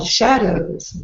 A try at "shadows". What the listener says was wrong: Open your mouth bigger A bigger mouth. Shadows. Look at Holly when pronounced.